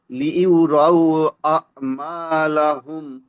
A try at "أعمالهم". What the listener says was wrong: নয়, আ'মা, হামজা আইন জবর আ। হ্যাঁ, কণ্ঠনালীর মাঝখান থেকে আইন উচ্চারণ হবে। আ'মালাহুম।